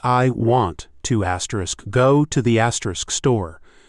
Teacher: The to and the become almost invisible, very quick. They're just connecting sounds. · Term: sentence rhythm